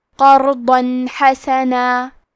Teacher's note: تنوین ظاہر کریں گے اور اسے نون ساکن پڑھیں گے اور بغیر غنہ سے یہ حکم کو ادا کریں گے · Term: اظہار